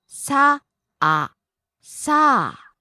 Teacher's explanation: Falls on the second syllable a.